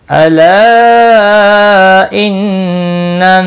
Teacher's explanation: الا مد منفصل ہے، 3 الف کے برابر کھینچ کر پڑھیں گے